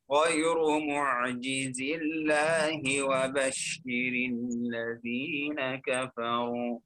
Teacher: في الوصل نحذف الياء بسبب التقاء الساكنين ونرقق لام لفظ الجلالة ونكسر الهاء